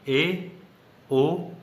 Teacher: अर्धसमृत स्वर क्या होता है? जिसमें आधे से कम मुख खुलता है। ए, ओ, ये अर्धसमृत स्वर हो जाते हैं।